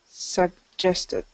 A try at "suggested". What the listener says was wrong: Yes. So it's almost like you close off your throat and then move into the J.